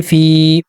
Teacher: زیر کو 2 حرکات کے برابر کھینچیں گے یعنی 1 سیکنڈ تک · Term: مدہ